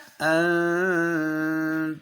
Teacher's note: نون کہو نون ساکن کو پڑھتے ہوئے نون ساکن کو پڑھتے ہوئے زبان کا کنارہ زبان کا کنارہ دانتوں کے مسوڑوں پر دانتوں کے مسوڑوں پر تھوڑا تھوڑا لگانے تھوڑا تھوڑا لگانا اور تھوڑا تھوڑا نہیں لگانا نہیں لگانا. اور ساتھ خیشوم ناک میں آواز چاہیے. یعنی غنہ ہوگا. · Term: اخفاء